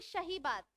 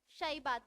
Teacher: कुछ लोगों को आपने बोलते हुए सुना होगा। वो सा को शा बोल देते हैं। शाई बात बोलते हैं।